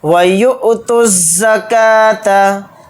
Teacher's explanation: یا کے ساتھ حمزہ ساکن ہے، یعنی کہ حمزہ کے اوپر اگر جزم ہوتا ہے تو جھٹکا دے کر پڑھیں گے اس پر ، اور پھر تا کو ڈائریکٹ زا میں ملا دیں گے،